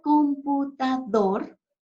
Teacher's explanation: la palabra computador tiene mayor fuerza de voz en su última sílaba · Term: sílaba tónica